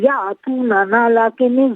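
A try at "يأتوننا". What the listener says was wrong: یأتوننا، نا کو ذرا کھینچیے نا. یأتوننا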